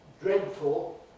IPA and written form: ˈdredfl̩ (dreadful)